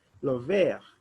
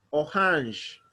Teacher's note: la vere don't pronounce the last letter we say lo ver r we pronounce it like a h